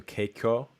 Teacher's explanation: the ka is sort of affricated